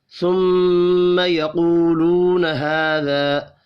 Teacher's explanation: میم مشدد پر غنہ کریں گے۔ یقولون، قاف حروف مستعلیہ ہے، پر پڑھا جائے گا، دو واو مدہ ہیں، دونوں کو ایک ایک الف کے برابر کھینچ کر پڑھیں گے۔